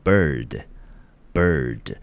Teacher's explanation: bird，▁好▁bird▁这个字的母音呢在▁ir▁呢发成一个数字3，后面呢绑了一只马尾， 这个音标我们就念成啊，记得舌头要卷起来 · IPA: bɝd